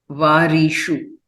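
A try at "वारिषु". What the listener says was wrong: Varishu. Vari, slightly a dirgha is heard.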